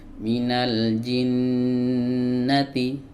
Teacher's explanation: jadi dia fathahnya tidak di panjang tapi Nun nya ini yang di panjang ditahan